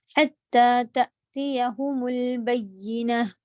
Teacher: हाँ पे हलक के बीच के हिस्से से ज़ोर देंगी। हत्ता तअतियहुमुल बय्यिनह, बय्यिनह या के ऊपर आपका मुशद्दद है।